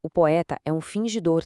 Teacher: Mas quando a gente aplica a métrica poética, o som de pô e e se junta, e o tá se funde ali com o é, e assim, magicamente, a matemática sonora pega essas 9 sílabas rígidas e transforma em exatas 7 sílabas rítmicas. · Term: escansão